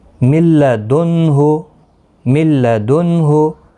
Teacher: نون ساکن کے بعد لام آیا ہے تو نون نہیں پڑھا جائے گا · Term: ادغام